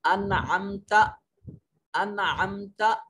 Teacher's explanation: انعمت نون ساکن ہے اور اس کے بعد عین حروف اظہار میں سے نون کو ظاہر کریں گے۔